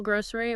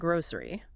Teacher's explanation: you can say it with more of an e sound in the middle, grocery or more of a z sound, grocery. And both are totally fine.